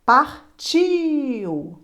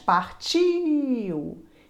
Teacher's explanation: Olha o I aí mais forte. Partiu. Então, o I é a vogal e o U é a semivogal.